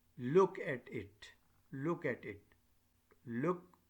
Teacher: Your stress, your focus, your main objective, your nucleus is look. That is called this tonic syllable, and at it, this is the tail.